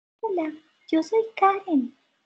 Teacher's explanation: en tono agudo con volumen bajo así Hola Yo soy Karen tengo un tono agudo pero estoy hablando con un volumen bajo